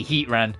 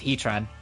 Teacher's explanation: you pronounce the T as part of the second word